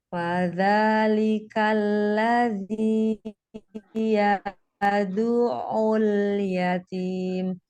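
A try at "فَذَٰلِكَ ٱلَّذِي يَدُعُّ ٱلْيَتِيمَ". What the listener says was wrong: Alirkan lagi ain. Yad'ul. Yadu' gitu ya, ngalir, jangan yadu'ul. Nah, kalau seperti ini jadi tertahan ya suaranya. Ya, ngalir. Yadu' gitu. Yadu'ul.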